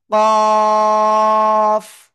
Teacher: জিহ্বার গোড়া, তারপর আবার উপরে তালুর সঙ্গে লাগিয়ে চার আলিফ টেনে পড়তে হবে